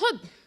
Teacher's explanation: حب یعنی یہ ہا اور با دو حروف سے مل کے بنا ہے، اور اگر ان دونوں حروف کا مخرج یعنی جہاں سے یہ پرناؤنس کیے جاتے ہیں، اگر اس پہ غور کریں گے تو پتہ چلتا ہے کہ ہا حلق کے آخری حصے سے اور با لپس کے آؤٹر موسٹ ایریا سے ادا ہوتا ہے۔ یعنی محبت یعنی حب کے بولنے میں بھی، یعنی اس کو کہنے میں بھی ابتدا میں بھی شدت ہے اور امتحا میں بھی شدت ہے۔